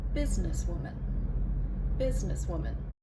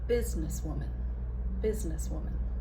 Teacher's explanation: I put the primary stress on the first syllable and I did the secondary stress on Woman.